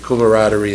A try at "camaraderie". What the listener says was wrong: How'd you pronounce it? Kumarad. I think you said Kumadin.